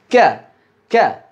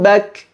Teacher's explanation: huruf kaf ketika kita ucapkan dengan kuat, itu sudah otomatis ada hembusan udara yang mengikutinya